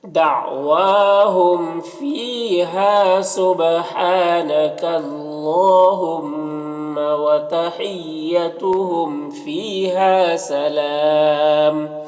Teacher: والے متحرک حرف کاف سے مل کر پڑھا جائے گا اور لام کو پر پڑھیں گے کیونکہ اللہ کے لام سے پہلے کاف کے اوپر زبر ہے تو پر پڑھیں گے · اگر وقف کریں گے تو دو پیش کی تنوین سکون سے بدل جائے گا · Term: مد عارض وقفی